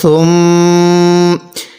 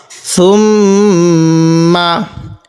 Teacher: সাটা একটু নরম করে পড়ব এবং নাকের বাসি দ্বারা এখানে গুণনা করব, কারণ মিম এবং নুনের উপর তাজদিদ হলে সেখানে আমাদের গুণনা করতে হবে।